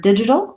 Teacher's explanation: And what that means is parts of the word are stretched out, held longer, and other parts of the word tend to be shorter and reduced. And in the word digital, we have first syllable stress. So the di part is long, and we can see that marked in the dictionary with a little line before the first syllable.